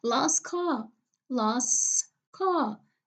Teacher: middle T will be elided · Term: elision